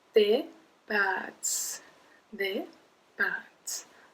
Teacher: when you have an accent circumflex, you're supposed to pronounce the letter longer.